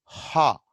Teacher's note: at glottis level air is stopped and then released